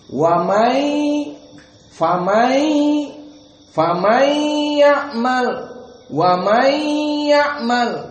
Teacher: nun sakinah bertemu dengan ya. Idgham bighunah.